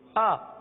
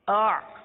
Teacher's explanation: حمزہ سخت ہے, حمزہ سختی کے ساتھ ادا ہوتا ہے, جیسے آ. حمزہ کے اندر سختی ہے آ, اور عین کے اندر نرمی ہے آ. تو ان دونوں میں بہت فرق ہے.